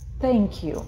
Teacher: сейчас язык высовываем и сдавливаем его зубами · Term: мягкий звук